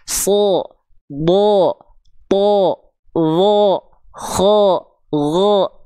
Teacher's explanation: Huruf yang dibaca tebal ketika fathah itu bunyi vokalnya bukan A, tapi O, seperti ya, bukan O banget tapi ya, seperti O, seperti mirip O.